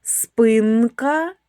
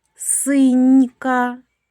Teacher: Н - твердий приголосний. Нь - м'який приголосний.